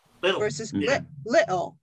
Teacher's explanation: with the British is that you either say the T really strong or you don't say it at all. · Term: The glottal stop